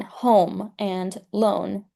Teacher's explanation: It should be pronounced like a long O in the Italian or common American manner, as in home and loan.